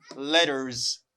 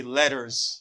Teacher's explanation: You hear the sound R before S. You say letters. You pronounce this S as Z sound.